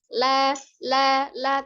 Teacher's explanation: Jadi tidak ada aliran nafas ketika mengucapkan huruf lam. La, tidak ada hembusan nafasnya ya. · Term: al-jahru